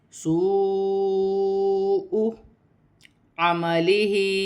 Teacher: واو مدہ کو ملائیں گے 6 الف کی مقدار تک کھینچ کر پڑھا جائے گا